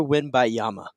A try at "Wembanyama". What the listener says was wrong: Wembanyama. think there's another syllable in there. Wembanyama. Is that what you're saying? Wembanyama.